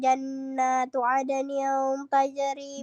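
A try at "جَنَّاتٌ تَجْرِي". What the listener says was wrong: Jannatul tajri. Tidak ada adning. Jannatul tajri.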